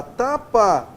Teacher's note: a palavra tapa pra você não confundir com a palavra tampa quando eu falo a palavra tapa eu tenho aqui uma vogal oral